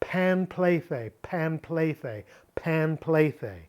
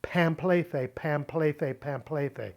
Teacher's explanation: a P sound following an M sound is more natural, the lips coming together, than if you have to move from the tongue against the teeth. Panplethe is harder than pamplethe.